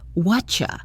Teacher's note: The words what are you have been crushed together to sound like whatcha. The T from what and the Y from you assimilate to make that chie sound. · The R is completely reduced and disappears. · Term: assimilation and reduction, reduction